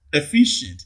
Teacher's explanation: In efficient, the second syllable receives the primary stress.